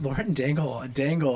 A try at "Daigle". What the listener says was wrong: Daggle. No, there's no N. There's no N.